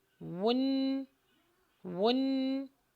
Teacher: واو پر ہونٹوں کو گول کریں کیونکہ اس کے اوپر ضمہ یعنی پیش ہے